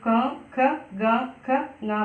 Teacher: തൊണ്ടയിൽ വെച്ചാണ് നമ്മൾ ഈ ക, ഖ, ഗ, ഖ, ങ പറയുന്നത് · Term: കണ്ട്